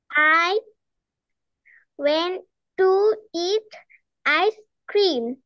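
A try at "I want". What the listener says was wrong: I ওয়েন্ট না, I ওয়ান্ট।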